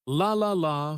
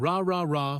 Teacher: For the L sound, the tongue touches the top of the mouth behind the teeth, but for the R sound, the tongue stays back without touching anything.